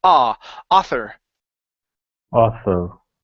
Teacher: the AU in this word creates an ah sound instead of ow.